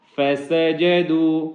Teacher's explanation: آگے الف ہے جس کی وجہ سے یہاں پہ چھوٹی مد ہے اس کو 1 سے 3 گنا لمبا کریں گے